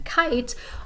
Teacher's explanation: k as in kite, a voiceless velar stop